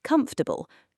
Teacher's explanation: But native speakers almost always say comfortable, three syllables, with the middle syllable nearly disappearing